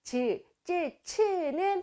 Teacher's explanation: 그리고 센 입천장 소리의 대표음은 지읒이야. 즈, 쯔, 츠는 딱딱한 입천장이 닿으면서 소리가 만들어지기 때문에 센 입천장 소리